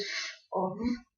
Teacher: Labiodental is when the active lower lip articulates with the passive upper teeth